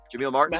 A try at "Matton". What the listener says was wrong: Matton. Matton. Yeah, no R.